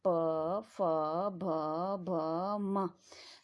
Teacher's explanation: पवर्ग जब आप बोलोगे तो पूरा बल कहाँ पे लग रहा? होंठों पे लग रहा।